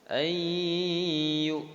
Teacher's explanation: Jadi nunnya enggak terdengar lagi, langsung terdengar huruf ya. Ayyu ya, jadi ditahan, didengung selama dua harokat. · Masukkan suara nun mati ke dalam huruf ya. Ya. Jadi nunnya enggak terdengar lagi, langsung terdengar huruf ya. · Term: idgham bi gunnah